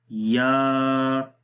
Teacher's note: ज़ुबान का दरमियान वाला हिस्सा इतना बुलंद हो जाए कि वो तालू के करीब तर हो जाए। इसलिए इस या का जो मखरज है वो ज़ुबान का दरमियान वाला हिस्सा जब तालू के दरमियान वाले हिस्से के साथ टच होता है तो मुराद उससे यही है कि करीब तर हो जाए।